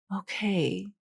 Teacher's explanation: He kind of ends with a glottal fry or something kind of breathy there at the end. And he's just like surrendering to her, pretty much is what his intonation pattern is saying.